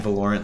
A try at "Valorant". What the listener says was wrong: And on the wrong syllable.